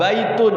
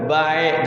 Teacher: Kemudian ya sukun juga depannya seperti a ya, baitun, jangan baik, jangan baik, pakai i.